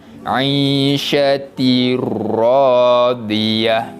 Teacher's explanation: kita masukkan bunyi bacaan tanwin kepada huruf selepasnya dan dibaca tanpa dengung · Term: idgham bila gunnah